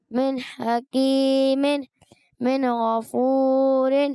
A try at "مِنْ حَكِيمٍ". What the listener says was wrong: اچھا بہت زیادہ حروف مدہ کو کھینچنا. من حکیم ایسے نہیں، من حکیم. من غفور زیادہ نہیں، ایک الف سے زیادہ بھی آپ نے حروف مدہ کو نہیں کھینچنا، اس چیز کا بھی خاص خیال رکھنا ہے.